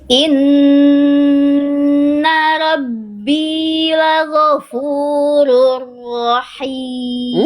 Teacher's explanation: kalau huruf ro itu getarannya mungkin cuma satu atau dua. Dia nggak banyak-banyak.